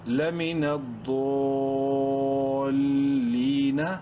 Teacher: وقفاً نون کا زبر اڑ جائے گا